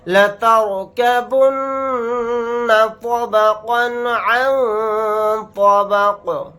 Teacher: یہاں پر نون کے اوپر تشدید ہے تو یہاں پر ہم غنہ کر کے پڑھیں گے